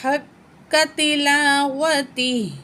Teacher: यहाँ ठहरेंगे, हा की खड़ी ज़ेर ड्रॉप हो जाएगी, हा को साकिन पढ़ा जाएगा। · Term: वक्फ़े मुतलक